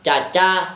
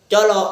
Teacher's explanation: C merupakan bunyi kontoid afrikat lamino alveolar, tidak bersuara.